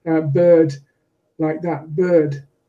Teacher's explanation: in English English the RS disappears altogether and all that remains is the long vowel